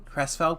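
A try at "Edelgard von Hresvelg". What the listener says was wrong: That cannot be what that was. There was an H.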